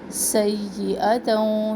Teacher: سیئتوں سین میں سختی اور سیٹی